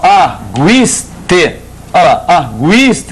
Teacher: Já na forma arguiste, olha lá, arguiste, continua o I a ser forte, o U é fraco.